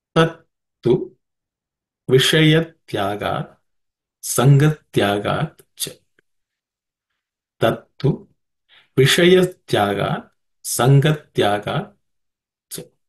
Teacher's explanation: there are no aspirated consonants in this sutra · this sha is a cerebral sha